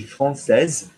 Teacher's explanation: pronouncing the S at the end because there's an E after it, and pronouncing it like a Z because it's an S, not a double S.